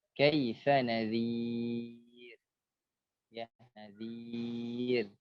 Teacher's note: Ra-nya adalah takrir muraqqaqah atau takrir tarqiq ya. Dia bergetar dengan bergetar yang tipis ya. Bergetar dengan getaran yang tipis.